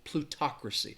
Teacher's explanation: And the stress is on that talk, that second syllable, plutocracy.